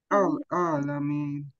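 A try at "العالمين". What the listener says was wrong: আ গলা ভাঙতে হবে, আল আলামিন। আলে গলা ভেঙে ফেলছো, আলে গলা ভাঙবে না, আলে আল, তারপরে আলামিন।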